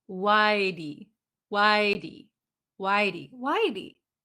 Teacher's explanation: in america the t sometimes disappears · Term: american t sounds